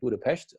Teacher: the single S in Hungarian is like a sh sound in English